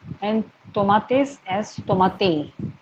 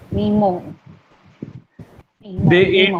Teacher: Aspiration, it is a loss of pronunciation of H of the sound S at the end of the syllable. The word mismo is pronounced as mimo, and tomates as tomate.